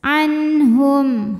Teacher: nun sukun menghadapi huruf halqi atau huruf tenggorokan yaitu ha maka Nun dibaca jelas